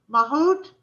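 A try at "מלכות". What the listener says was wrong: Malchut. With a ch, malchut.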